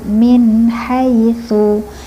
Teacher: Hai satu ketukan. Tsu ini e makhrajnya lidah ujung lidah dengan gigi atas.